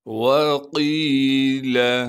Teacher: کَلَّا اِذَا بَلَغَتِ التَّرَاقِي وَقِيلَ، واو کو بغیر کھینچے پڑھنا ہے، قاف کو موٹا کر کے پڑھیں گے اور قاف کو آگے یا مدہ سے ملا دیں گے۔ یا مدہ ہونے کی وجہ سے قاف کو ایک الف کے مقدار کھینچیں گے